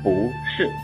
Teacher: 如果不这一个字在去声四的前面，我们要读阳平